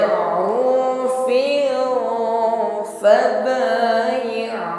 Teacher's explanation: pertemukan ujung gigi sari atas dengan bibir bawah ya. Sifat yang menyertai huruf fa ini hamas, ada nafas yang mengalir